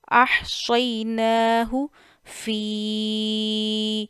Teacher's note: تو یہ آپ نے 2 سے 2.5 الف جتنی مد منفصل کھینچنی ہے